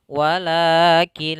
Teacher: Idgham artinya memasukkan nun kepada huruf lam, memasukkan huruf kepada huruf setelahnya, yaitu nunnya kita masukkan ke lam, kemudian kita langsung baca la-nya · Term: idgham bila gunnah